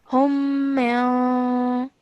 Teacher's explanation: you hold the light nasal sound in your nose for 2 seconds as well, because the next letter is Jim.